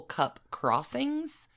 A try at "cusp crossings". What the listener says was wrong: Cup crossings or cusp crossings? You said cup crossing.